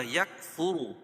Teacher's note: را کو پر پڑھیں گے، کیوں؟ اس لیے کہ را کے اوپر پیش ہے